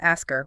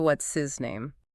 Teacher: When these words appear in the middle of a sentence and are unstressed, Americans simply do not exhale the puff of air required to make the h sound. The h vanishes.